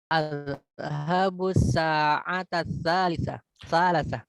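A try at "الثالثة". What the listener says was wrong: Ini salisa harusnya nih. Nih mungkin harokatnya harusnya ke sini, yang ini harusnya ke sini. Ketukar dia. Adhabus sa'atas tsalitsah.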